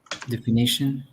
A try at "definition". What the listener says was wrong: Well, definition is de, not d. pronunciation, yeah, the word begins with d e, but the pronunciation is d decoy.